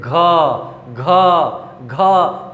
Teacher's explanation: घ घ घ, बोल के देखिए कंपन हो रहा है